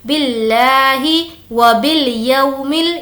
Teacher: یو کو نہیں کھینچیں گے کیونکہ یہ واو لین ہے